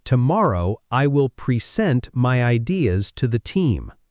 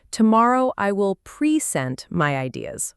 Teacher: when present is a verb, the stress almost always moves to the second part.